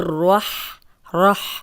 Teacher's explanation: اب را کو موٹا پڑھیں گے کیونکہ را پہ زبر ہے اور شد والا حرف 2 بار پڑھا جاتا ہے، تو ہم را کو 2 بار پڑھیں گے۔